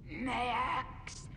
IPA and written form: ˈmeɪ.æks (Maax)